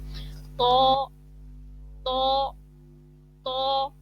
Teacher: تا دال تو ایک ہی مخرج ہے لیکن کیا ہوگا کہ یہاں پہ تو کو بھی تا سے ڈفرینشیٹ کریں گے اور موٹا پڑھیں گے